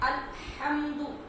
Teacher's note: جب سانس کھینچتے ہیں تو وہ جو ٹھنڈی آواز پیدا ہوتی ہے، یہ اس طرح اس ہا کی آواز آنی چاہیے